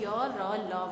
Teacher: मुख से हमारी जो वायु निकलती है वो हमारे मुख के अंगों, चाहे वो दंत हो, ओष्ठ हो, जीवा हो और तालु हो, इनसे स्पर्श पूर्ण रूप से नहीं करती। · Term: अंतस्थ व्यंजन